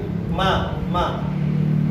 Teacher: mengucapin ma-nya ini keluar dari rongga hidung dan 2 bibir · ma makhrajnya di 2 bibir